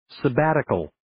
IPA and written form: sə'bætɪkəl (Sabbatical)